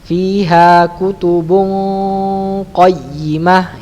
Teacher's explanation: Tebal dia karena huruf qaf itu berada di pangkal lidah mengenai langit-langit yang lunak paling belakang ya.